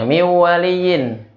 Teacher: nun sukun, dengungnya udah makhrajnya di pangkal hidung, wawnya udah di makhraj yang beda yaitu di dua bibir